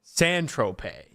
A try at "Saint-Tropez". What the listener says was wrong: All right, that's close. When you said "sand," the last one, it sounded like you put the emphasis on the wrong syllable.